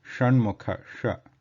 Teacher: Then the next one is the Sha word, which is Sha, Sha letter, which is Murdha, which has to be the sthanam, the place is Murdha here, and tip of the tongue curled, push the air out.